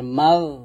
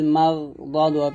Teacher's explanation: এখানে মাটাকে মোটা করতে হবে